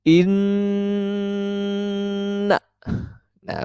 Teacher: maka itu hukumnya adalah gundah maka harus didengungkan cair membacanya dan didengungkan sebanyak dua harkat atau satu Alif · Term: ghunnah musyaddadah